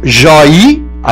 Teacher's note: Esse oi é tônico, esse oi é aberto, só que ele não é final. Joia é paroxítona, o mesmo ocorre em geleia.